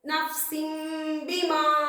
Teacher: தன்வீனுக்கு பின்னால இக்லாபுடைய பா வந்திருக்கிறதால தன்வீன் உள்ள நூனை மீமாக மாற்றி குன்னா செய்து ஓத வேண்டும் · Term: இக்லாபுடைய சட்டம்